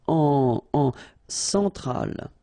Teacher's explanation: E-N, nasal, so it goes in your nose.